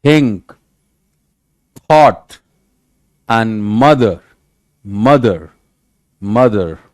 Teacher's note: and then interdental, made of the tongue and the upper teeth